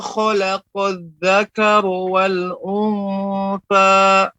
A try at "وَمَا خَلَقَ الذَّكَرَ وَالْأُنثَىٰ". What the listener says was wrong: Ya, rohnya lebih diperjelas lagi, Pak. Jadi tidak menjadi tidak terpengaruh dengan huruf wa setelahnya. Khalaqadz dzakara wal.